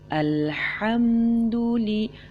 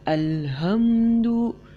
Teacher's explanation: Artinya ada huruf ha yang jelas di sana